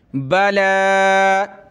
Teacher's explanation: یا کو نہیں پڑھنا، لام کو ایک الف کی لمٹ میں اوپر کھینچیں گے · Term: لام کھڑا زبر